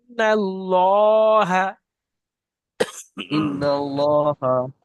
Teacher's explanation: নুনকে গুণনা করতে হবে আর লামকে টান দিতে হবে